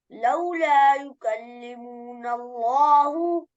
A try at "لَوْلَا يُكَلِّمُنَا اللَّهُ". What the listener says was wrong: لولا يكلمنا الله मीम को खींच के नहीं पढ़ना